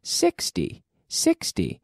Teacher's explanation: and we have 16 data the intonation on the second syllable whereas with 60 we have the intonation on the first syllable